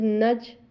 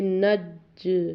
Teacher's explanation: یہ ہم جیم کو قلقلہ کر رہے ہیں